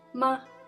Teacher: the last tone is known as the neutral tone, and it's flat and without any intonation, and sometimes just slightly softer than first tone.